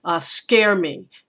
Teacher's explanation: I hear that as a scare me as a spondee, that scare and me are stressed. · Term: spondy